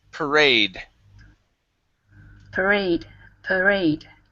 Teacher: The stress is at the end of the word.